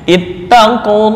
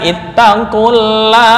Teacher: lam lafzul jalalah al wajib dibaca dengan tafhim. Ittaqulah bukan ittaqulah.